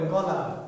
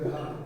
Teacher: খই বলতে গেলে একটুখানি বাড়তি, খুব বেশি না, কিন্তু আপনি যদি বোঝেন দেখেন যে একটু, তার মানে ক আর গ বলতে গেলে অনায়াসে তা বলা যায় অল্প পরিশ্রমে, আর খ এবং ঘ বলতে গেলে যেন একটু বাড়তি প্রেশার সৃষ্টি করতে হয়, কারণ একটু বেশি বাতাস বের করতেছি আমি, ফলে একটু বাড়তি চাপটা বেশি দিতে হয়।